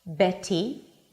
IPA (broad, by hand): ˈbeɾi